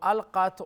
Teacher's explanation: qaf is full mouth because it has the quality of isti'ala